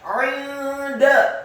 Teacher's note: Kata 'inda, ainnya ditekankan, kasrah 1 harokat, nun yang sukun bertemu dengan huruf dal. Hukum bacaannya adalah ikhfa, dibaca samar-samar